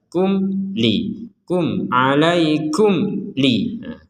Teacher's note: ada mim sukun bertemu dengan lam kita membacanya dengan jelas